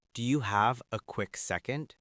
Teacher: The pitch of my voice goes up slightly at the end